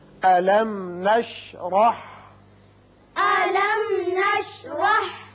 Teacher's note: میم ساکن یہاں اظہار شفوی ہوگا اور را کے اوپر زبر ہے، اس کو پر کر کے پڑھیں گے